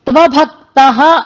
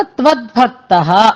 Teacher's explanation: అందుకని త్వభక్తః అని అనాలి తప్ప త్వద్భక్తః అని దకారం అక్కడ వినపడకూడదు